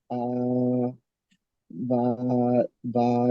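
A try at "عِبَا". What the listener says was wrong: ওটা আইন জাবার নয়, আইন, আইন জের ই, আইন জের ই। আবা নয়, ইবা, ইবা।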